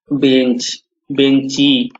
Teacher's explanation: অন্ত স্বরাগম, যেমন বেঞ্চ, বেঞ্চি, এখানে হ্রস্বইকার এসে গেছে।